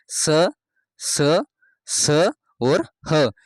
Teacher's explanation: प्राणवायु यानी मुंह से निकलने वाली हवा गर्म अंदर से गर्म होकर बाहर निकलती, यानी कि यह मुख से रगड़ खाकर बाहर निकलती हैं, इसलिए इन्हें ऊष्म व्यंजन कहा जाता है।